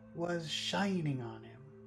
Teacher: was and on him are very small shine is the big word